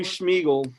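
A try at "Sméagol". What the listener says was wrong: not Schmiegel, Smeagol. There is no sh in it. It's just Smeagol.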